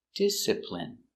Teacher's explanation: Stress on the first syllable.